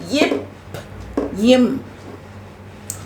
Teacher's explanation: மேல் இதழும் கீழ் இதழும் பொருந்துவதால் தோன்றுகின்றன எப்படி இப் ம் அப்ப கீழ் இதழ் மேல் இதழ் ரெண்டும் பொருந்துவதால் தோன்றுகின்றன